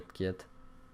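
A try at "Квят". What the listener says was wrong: C'est Kiat, je crois, le V se prononce pas.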